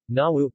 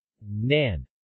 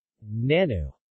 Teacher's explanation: similar to English 'n' in nun, but with the tip of the tongue against the top teeth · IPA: [n]